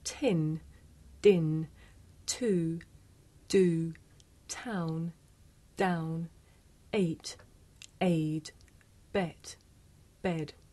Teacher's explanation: Did you notice how the puff of air at the beginning of tin makes the paper move?